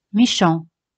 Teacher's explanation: Como veis aquí, T al final no se pronuncia.